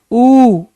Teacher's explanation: जब हमें ये पता है कि ऊ का उच्चारण में हमारे होठ गोल गोल घूमते हैं